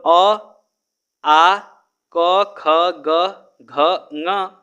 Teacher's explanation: इतने वर्णों का उच्चारण स्थान कंठ होगा